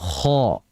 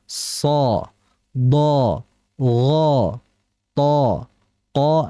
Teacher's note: Bahwasanya tebalkanlah huruf yang bersifat isti'la. Jadi harus dibaca tebal huruf yang bersifat isti'la, namun ketebalannya pun jangan dibuat-buat. Akan tetapi dengan cara menaikkan pangkal lidah